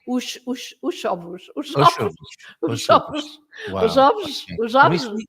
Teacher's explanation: They pronounce sh instead of the z sound. They would say os ovos.